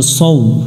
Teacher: এখানে সদ অক্ষরের উপরে দুইটা সংকেত চিহ্ন দেখতেছি, একটা শাপলা ফুল একটা পাতা, আমরা জানছি শাপলা ফুল যেখানে থাকবে ওই অক্ষরটাতে জবরে আকার পড়া যাবে না, তাহলে এটা সা পড়া যাবে না, স পড়তে হবে এবং শীষ দিয়ে পড়তে হবে। স মিলবে ওয়ার সাথে, সৌ।